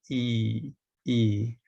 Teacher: the first sound here e is high the jaw is nearly closed it's the higher of the high pair of sounds the tongue is in the front